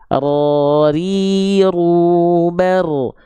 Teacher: Jadi huruf ro itu getarannya sedikit tapi tetap tegas, lugas dan jelas.